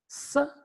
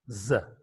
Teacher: S is a voiceless alveolar fricative consonant sound, whereas z is a voiced alveolar fricative consonant sound.